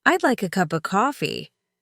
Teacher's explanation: The stress was on like and coffee while the other words were almost swallowed. If I said it word by word, it sounded stiff.